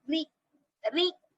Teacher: را پر زیر ہو تو را کو باریک پڑھیں گے